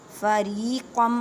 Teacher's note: را کو باریک پڑھیں، را کو ایک الف کی مقدار میں کھینچ کر پڑھیں